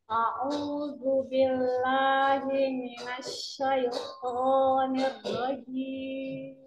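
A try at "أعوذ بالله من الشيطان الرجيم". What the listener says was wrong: Imalahnya bertambah.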